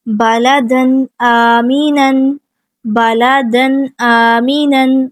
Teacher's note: دال پہ تنوین، اس کے بعد حمزہ آ گیا آمینن میں، تو یہاں پہ بھی کیا ہے اظہار ہے، ہم تنوین کی آواز کو ظاہر کریں گے۔